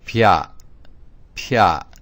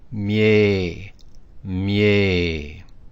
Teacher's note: The pronunciation for this symbol, when applied with the consonants we're going to consider on this page, it adds a Y sound after the consonant.